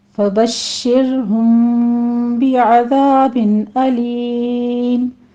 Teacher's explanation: फबश्शिरहुम बिअज़ाबिन अलीम। बश्शिर, शीन के ऊपर तफस्सी करते हुए तशदीद अदा करेंगे और आगे रॉ बारीक पढ़ी जाएगी।